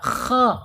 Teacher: Min khash, kha, awas tebal. Harus ditebalkan ya, karena posisinya dia ada di tenggorokan atas ya.